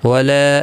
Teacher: لا الف مدہ ہے، 1 الف کی مقدار کے برابر کھینچ کر پڑھیں گے